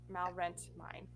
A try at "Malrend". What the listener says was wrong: Rent, but with a D instead of a T.